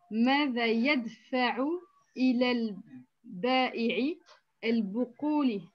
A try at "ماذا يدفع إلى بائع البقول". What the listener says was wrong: ماذا يدفع إلى بائع البقول. Il n'y a pas d'alif lam ici. إلى بائع البقول.